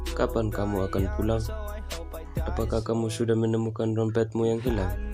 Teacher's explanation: Kalimat tanya diiringi dengan intonasi bernada naik pada akhir kalimat.